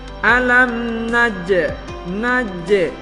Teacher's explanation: huruf Jim sukun harus dibaca Qalqalah alam naj Najwa harus jelas nah jne-nya huruf Qalqalah kemudian huruf